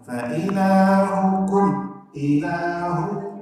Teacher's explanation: Mim mati berjumpa dengan alif itu hukumnya izhar, bukan gunnah. Jangan didengung.